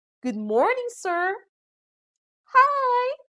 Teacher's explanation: we also observe rising intonation when we are greeting someone